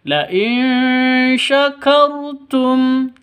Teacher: kar rnya jangan lupa tebal ya Jangan dibaca tipis